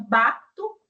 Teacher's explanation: bato como se eu tivesse aí um U no final